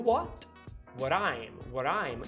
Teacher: Você puxa pra trás pro palato pra fazer o you, than you, e você vai fazer um flapping no what, what I'm, what I'm.